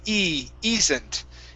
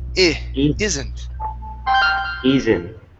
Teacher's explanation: The difference here is that your tongue, when you pronounce the long E, it's up higher in your mouth than the short I